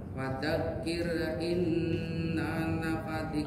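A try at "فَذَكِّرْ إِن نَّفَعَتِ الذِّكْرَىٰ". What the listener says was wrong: Pendekannya. Fadzakir in nafa'atit. Tahan dulu kafnya siddah.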